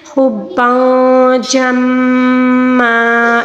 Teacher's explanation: میم کے اوپر تشدید ہے، جب بھی میم پر تشدید آ جائے اس میں غنہ ہوتا ہے